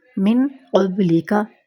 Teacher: اس مثال میں ہم دیکھیں گے کہ نون کی آواز اخفا کی وجہ سے بالکل چھپ گئی ، اور اخفا کا مطلب یہی ہوتا ہے چھپانا، کیونکہ یہ